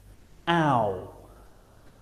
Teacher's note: This is a combination of a and or oo. Now our mouth is closing and the shape of the lips is changing at the same time, rounding a little as we say the sound. Ow. Starting on the a and finishing on the or oo.